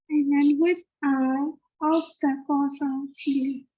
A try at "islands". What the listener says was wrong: ISLANDS islands. Islands. S is silent. You don't need to pronounce it.